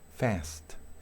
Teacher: una A mucho más cerrada, casi nasal